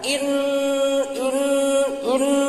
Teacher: gunah teh sora anu bijil tina liang irung bari panjangna dua